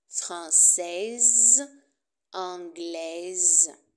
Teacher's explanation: Et le féminin, on prononce le S et le E.